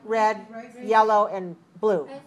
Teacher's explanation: rising means I need an answer i'm not sure i'm not finished and the falling is finished